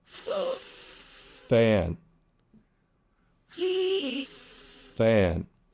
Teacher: no voicing. If you put your hand on your throat, you should not feel any vibration.